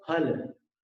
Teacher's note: फल के उच्चारण में दोनों होंठ मिलाने होंगे। अपन ऐसे हिंदी में फल फल बोलते हैं, वो फ नहीं है, फ है।